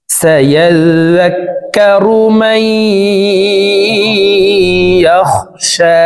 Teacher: মাই এখানে ইদগামে বাগুন্না, নুন সাকিনের পর ইদগামে বাগুন্নার 4 হরফের একটি হরফ ইয়া আসছে, এই কারণে এই মিম তাসদিদওয়ালা ইয়ার সাথে গুন্নার সহিত মিলাইয়া পড়ব। মাঝখানে জজমওয়ালা নুন বাদ পড়ে যাবে